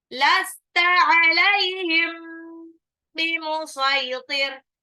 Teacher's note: Mim sukun ketemu ba itu ikhfa syafawi, ya, jadi agak ditahan